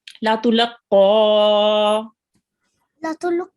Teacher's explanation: we round our mouth a bit when we read it with the fatha, and we also pronounce it from the middle of our throat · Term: thick letter